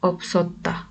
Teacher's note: BS harfinden sonra ünlü bir harf geldiği için her ikisini de okuduk. Gelen ünlü harf I, Ya, Yo gibi bir harf olmadığı için de S harfini yine S şeklinde okuduk.